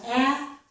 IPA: æ